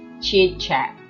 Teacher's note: Jadi di sini ada vowel I berubah menjadi vowel A gitu ya, atau vowel I menjadi A gitu ya. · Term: ablaut reduplication